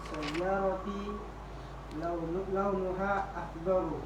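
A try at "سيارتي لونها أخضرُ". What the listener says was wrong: Nah, bukan akhdorun karena tidak bisa tanwin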